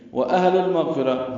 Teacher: حمزہ اور ہا دونوں اقصی حلق سے ادا ہوتے ہیں، حمزہ بالجہر ادا ہوگا، ہا پہ حمز ہوگا، لام کو لام سے ملا دیں گے، اظہار ہوگا، یہ اظہار قمری اب لام پڑھا جا رہا ہے.